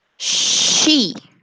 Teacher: practice the place of articulation of sh sounds is palatal alveolar the tongue blade makes slight contact with the alveolar ridge and the front of the tongue is raised the shh sound is unvoiced and leans to make that sound